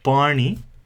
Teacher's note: the very strong retroflex N sound